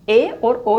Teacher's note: जिन स्वरों के उच्चारण में मुख द्वार आधा बंद रहता है, पूर्णतया बंद ना होकर क्या होता है, आधा बंद रहता है, अर्ध संवृत कहलाते हैं।